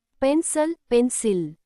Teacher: The second syllable, cil, is unstressed and sounds like a. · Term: schwa